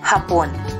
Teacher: bigkas mabilis at may diin sa ikalawang pantig